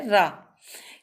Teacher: इसके उच्चारण में जीभ का पिछला भाग तालु को स्पर्श करके कंपन उत्पन्न करता है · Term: लुंठित व्यंजन